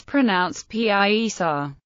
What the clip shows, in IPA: pʰiːəsaː